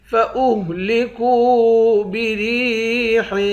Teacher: کاف کو واو کے ساتھ ملا کر واو کو ایک الف کے مقدار کھینچیں گے، واو حروف مدہ ہے۔ را کو یا کے ساتھ ملا کر یا کو ایک الف کے مقدار کھینچیں گے، یا بھی حروف مدہ ہے۔